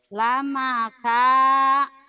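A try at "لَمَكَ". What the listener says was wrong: Nggak ada a-nya. Lamaka gitu. Nggak ada a-nya. Lamaka.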